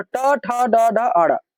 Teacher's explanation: ट, ठ, ड, ड, ण सबका उच्चारण स्थान मुर्दा होता है। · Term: मूर्धा